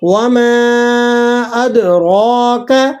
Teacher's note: کاف یہ باریک ہے، آپ نے اسے موٹا نہیں ادا کرنا